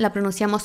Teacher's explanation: con la boca como si fuéramos a decir la o pero sale la A